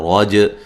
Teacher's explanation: رج را کو موٹا جیم پہ قلقلہ